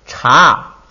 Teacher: 这个2声把调摁下来成了3声